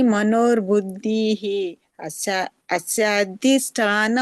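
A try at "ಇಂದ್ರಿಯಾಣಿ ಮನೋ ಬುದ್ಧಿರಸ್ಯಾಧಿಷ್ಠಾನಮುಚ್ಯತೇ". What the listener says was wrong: ನಿಮ್ದೇ ಶಬ್ದ ಸೇರಿಸಬೇಡಿ ಅಲ್ಲಿ ಮನೋರ್ಬುದ್ಿ ಮನೋರ ಅಂತ ಇಲ್ಲಿ ಅಲ್ಲಿ ಮನೋಬುದ್ಧಿಹಿ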